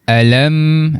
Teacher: kita perlu jelaskan bacaan mim mati tanpa dengung. Tanpa dengung yang dimaksudkan kat sini adalah a kita tak baca dengung sampai dua harakat tu. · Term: izhar syafawi